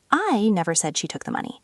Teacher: The stress on I, meaning I didn't say it, someone else might have.